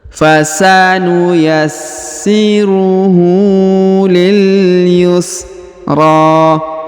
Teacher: huruf RO dipanjangkan dua harakat karena di atasnya terdapat Alif kecil atau di depannya pula terdapat